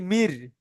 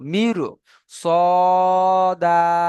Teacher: মির সদা, বানান করে দিলাম মিম র জের মির। মির বলে মুখটা একটু শেষ টাইমে গোল করে আসছি, কারণ র সাকিনের ডান দিকে জের আছে কিন্তু পরে সদ এসছে, ছয়টি অক্ষরের মধ্যে সদ এসছে, রকে পুর করে পড়বো মির সদা।